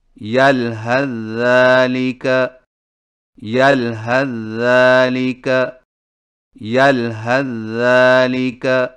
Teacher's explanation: number 8، یلحظ ذالک کو ملا کر پڑھنے کی صورت میں سا کو ذال میں داخل کر کے ایک مشدد ذال سے پڑھیں